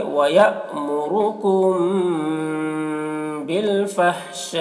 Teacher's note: تو یہاں پر پڑھیں گے وَيَأْمُرُكُمْ بِالْفَحْشَاء، یہاں پر حرف مد کے بعد حمزہ اسی کلمہ میں ہے تو مد متصل ہوگا۔ مد متصل کو 3 یا 4 الف کے برابر کھینچ کر پڑھتے ہیں۔ · میم ساکن کے بعد با آئے تو اس کو غنہ کے ساتھ اخفا کر کے پڑھا جاتا ہے، اس کو اخفاء شفوی کہتے ہیں۔